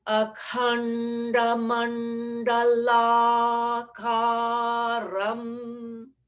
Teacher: The tongue moving to the top of your palate, the hard palate for khanda, anda, manda, nda.